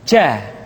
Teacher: kesalahan yang sering muncul ketika mengucapkan huruf ja adalah mengalirnya nafas